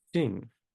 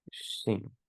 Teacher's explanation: it's Mm. between the S and the SH sound.